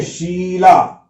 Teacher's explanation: श, शकर का जो उच्चारण होता है वह तालु से होता है, गले के ठीक आगे के ऊपर वाले हिस्से से। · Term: तालव्य श